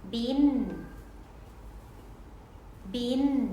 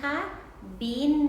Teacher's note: เสียงแม่กลเป็นเสียงที่ปลายลิ้นจะต้องยกแตะปุ่มเหงือกหลังฟันบนนะคะ